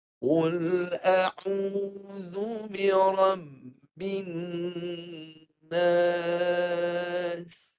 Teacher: apabila dia bersabdu maka Nun itu nak dijelaskan matinya dia disempurnakan panjangkan bunyi Nun pada makhraj ini dengan panjang kadar dua harkat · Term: dengung